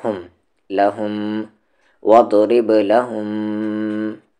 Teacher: پھر یہاں پر میم پہ تشدید ہے تو میم پر غنہ ہوگا، یعنی کہ آواز کو ناک میں رکھنا ہے